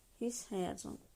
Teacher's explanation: Bu zaman yazılışda yenə qoşa s qalır. Amma tələffüzdə s-nın biri düşür.